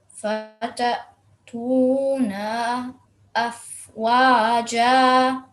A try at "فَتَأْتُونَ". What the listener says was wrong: Okay, on top of noon, don't prolong the short stroke of fatha for more than 1 second. فتأتون.